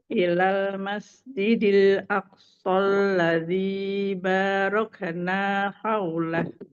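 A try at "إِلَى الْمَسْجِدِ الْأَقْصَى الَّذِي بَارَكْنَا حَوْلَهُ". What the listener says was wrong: Asan, tapi qafnya, qalqalahnya mau dipantul. Aqsa, aqo.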